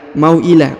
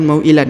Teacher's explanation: Huruf tanwin di ujung huruf lan yang ini ya. Dibaca lan, tapi karena berhenti di sini di ujung ayat atau bacaan, maka berubah menjadi la. Mau'ila, bukan mau'ilan ya.